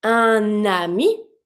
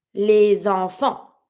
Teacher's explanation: Un ami with the N sound, les enfants with the Z sound. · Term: liaison